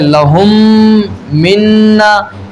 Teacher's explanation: اور جیسے لَهُم مِّنَّا، دیکھیں یہاں میم ساکن کے بعد ایک اور میم آیا، ٹھیک، تو اب کیا ہوگا؟ یہاں ادغام شفوی ہوگا یعنی ہم میم میں غنہ کر کے پڑھیں گے